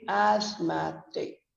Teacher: the stress moves from the first syllable to the second so we say asthmatic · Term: word stress